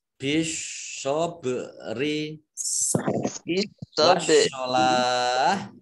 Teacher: Bisyobri, ini alif lam, alif lamnya alif lam syamsiah, tidak dibaca, langsung masuk ke huruf berikutnya yaitu shot, ditandai dengan ada tasdid, shotnya dibaca double. Bak sukun bacaan kolkolah, dibaca memantul.